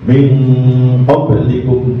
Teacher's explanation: jadi suaranya menjadi ngo karena makhrajnya ketika membaca dengung pada qaf ya. Qaf dan kaf itu jadi ngo ya.